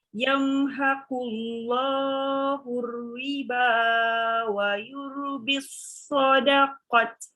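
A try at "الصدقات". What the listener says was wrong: Sadaqat. Ada alif panjang.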